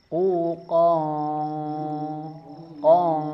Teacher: Karena ada tanwin bertemu dengan huruf qaf, sehingga dibaca ikhfa. Dan ikhfanya huruf qaf ini termasuk ikhfa ab'ad, yang jauh, agak dalam, mengangkat pangkal lidah